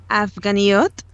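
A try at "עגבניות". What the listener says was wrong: Yes, you've just changed the agva to avga, but it's agvaniot.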